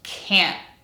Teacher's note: the vowel sound, the nasal eh, stays completely intact. And two, the letter T will be pronounced as a glottal stop.